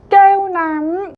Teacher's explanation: 깨요 부분에 좀 더 강세를 주어서 이제 장음을 확실하게 표현을 하고 뒤에 남을 좀 약하게 발화를 해주시면 됩니다.